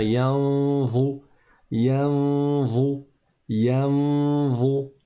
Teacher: on ne va pas complètement prononcer le noun, on va pas taper le palais avec la langue, mais on va faire un son avec la cloison nasale, ce qu'on appelle une runna, et on va préparer la lettre za. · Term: ikhfa